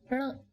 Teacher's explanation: This may seem to be a difficult sound as it doesn't exist in English. Just try saying n, but roll back your tongue slightly.